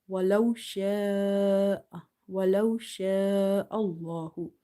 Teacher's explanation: hamza is occurring after madda letter in the same word. So you will stretch up to 2.5 alif. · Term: madde muttasil